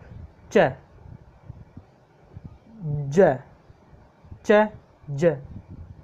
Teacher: तो ये प्लेटो एल्वोलर है, साथ में एफ्रिकेट है, क्योंकि इसमें एफ्रिकेट का मतलब स्पर्श करते हुए संघर्ष करता है, जीभ का अगला भाग ऊपर तालू की तरफ जाता है, स्पर्श करते हुए जाता है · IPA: tʃ dʒ